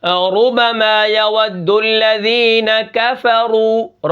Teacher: را کے اوپر اگر پیش ہو تو پھر بھی را کیا ہے؟ موٹی پڑھی جائے گی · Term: را موٹی